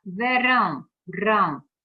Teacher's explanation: essas sílabas elas são chamadas de sílabas átonas então por exemplo na palavra verão rão é a sílaba tônica e V é átona